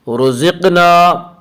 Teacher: رزقنا، رزقنا میں را کو پر پڑھیں گے، اس کا قاعدہ یہ ہے کہ را کے اوپر زبر اور پیش آئے تو را کو پر پڑھیں گے، را کے نیچے زیر آئے تو را کو باریک پڑھیں گے، یا را کے اوپر پیش ہے اس لیے را کو پر پڑھیں گے۔ رزقنا قاف میں قلقلہ ہوگا